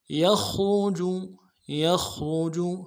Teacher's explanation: یخرج یخرج، یا کو خا کے ساتھ ملانا ہے، خا کو موٹا کریں گے، یخ، را کو موٹا کریں گے، جیم کو نرم سے ادا کریں گے